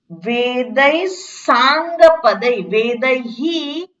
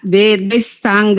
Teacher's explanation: વિસર્ગના પછી સકાર છે એટલે અડધો સકાર બોલાય વિસર્ગનો